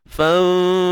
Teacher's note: Nun mati jumpa fa, ikhfa hakiki, sembunyikan nun di sisi huruf fa dengan dengung yang nipis kerana huruf fa adalah huruf nipis.